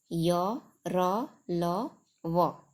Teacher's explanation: जिन व्यंजनों का उच्चारण करते हैं हम उस समय जिह्वा जो है, हमारी जीभ पूरी तरह से मुख के किसी भाग को नहीं छूती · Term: अंतस्थ व्यंजन